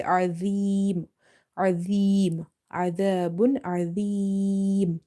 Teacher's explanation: You have to make it full mouth, and you have to avoid the buzzing z sound. So you have to suppress the sound of z and you have to say Azim, Azim, Adabun, Azim. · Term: Dha is heavy